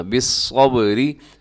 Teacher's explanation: آگے را باریک ہے، صبرے نہیں کرنا